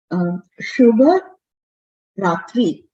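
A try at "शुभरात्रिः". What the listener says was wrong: Ratrihi. So Ratrihi has a visarga. Please don't forget it. So Shubha Ratrihi.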